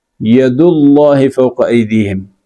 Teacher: ید اللہ میں دال پہ پیش ہے اور اس کے بعد لفظ اللہ آیا ہوا ہے، تو اس پیش کی وجہ سے وہ جو لفظ اللہ ہے اس کو آپ نے موٹا پڑھنا ہے